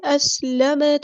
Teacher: سین کی سیٹی صحیح سے ادا کرنی ہے